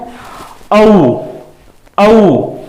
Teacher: देखें ओंठ की स्थिति गोल होगी